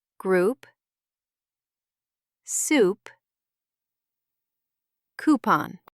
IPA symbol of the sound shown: u